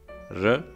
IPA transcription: ɹ